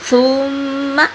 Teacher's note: سا کو نرمی سے اور میم پہ غنہ کریں گے